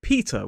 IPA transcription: ˈpiːtə